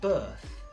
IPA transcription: bɜːθ